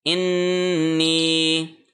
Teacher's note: چونکہ نون پہ تشدید ہے یہاں پہ غنہ کیا جائے گا، یعنی اس کو 1 سیکنڈ کے لیے ہم پریس کریں گے، ان، ایسے پریس کرنا ہے اس کو، انی، اور نی کو ہم نے 1 سیکنڈ کے لیے لمبا کرنا ہے کیونکہ یہ یا مدہ ہے، کیونکہ یا کے اوپر جزم ہے اور نون کے نیچے زیر ہے۔